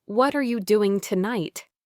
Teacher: with the voice rising on tonight for a question